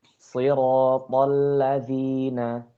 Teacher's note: Lamnya ditipisin, jangan terpengaruh sama tebal ta-nya.